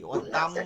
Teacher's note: মিম গুন্না আছে টান নাই